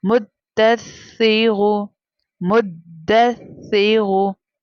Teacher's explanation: रॉ के ऊपर दम्मा यानी पेश है तो रॉ थिकर टोन में प्रोनाउंस करेंगे यानी उसे मोटा करके पढ़ेंगे।